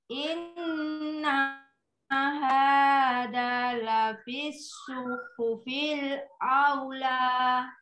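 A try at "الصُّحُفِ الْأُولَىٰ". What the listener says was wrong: Bukan aula tapi ula. Punya tidak boleh panjang soalnya setelah duma tidak ada wawu sukun. Suhufil ula.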